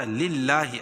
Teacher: اللہ کے نام باریک پڑھا جائے گا